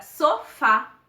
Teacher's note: cuja sílaba tônica é a última por exemplo a palavra sofá a sílaba mais forte é o fá e é a última sílaba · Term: oxítonas